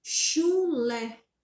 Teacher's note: qual que é a sílaba que tá mais tônica? É o lé.